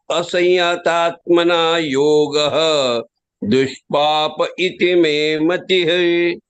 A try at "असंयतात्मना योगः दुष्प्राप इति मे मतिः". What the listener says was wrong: The thing is proper, not papa. Papa is sin. Prapa means you can get it. Praptam hota hai. Aapko prap. Proper, not papa.